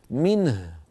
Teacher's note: ونقول منه بء صوتها ضعيف ضمه صوتها ضعيف او منه ب ضم الشفتين بعيده عند تسكين الهاء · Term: الاشمام